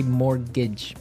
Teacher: it has a tee in it but you don't pronounce it you say mortgage so not mort's mortage not mortgage mortgage mortgage · I mean, there's this strange mortgage with a T. Yeah, it has a T in it, but you don't pronounce it. You say mortgage.